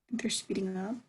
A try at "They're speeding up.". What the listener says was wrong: Okay, don't say it with a question mark in your voice. Say it with an exclamation mark in your voice. Yeah, they're speeding up.